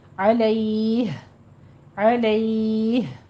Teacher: علیہ میں یا لین ہے، وقف کریں گے تو مد لین عارض پیدا ہوگی، علیہ، علیہ، ٹھیک ہے، مد لین عارض ہوگی یہاں پہ۔